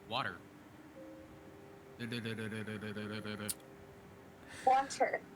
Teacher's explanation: It's not sounding like a D, right? Yeah, the T in water sounds like a D when you say it regularly